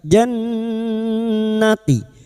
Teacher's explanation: Nun yang bertasdid gunna musyaddadah. Kita dengungkan selama tiga harakat.